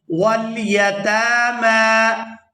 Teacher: یہاں تا پر بھی کھڑی زبر ہے اور آگے میم پر بھی کھڑی زبر ہے تو ان دونوں کو کھینچ کر ادا کریں گے